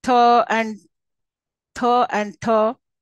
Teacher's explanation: dentals formed with the tongue tip behind the Upper Front Teeth